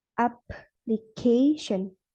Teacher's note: In word application, the stress falls on the first syllable and the third syllable as shown by 2 diacritics.